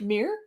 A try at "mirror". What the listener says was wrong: sound like you're saying mirror, like the word MEER. Like a meerkat.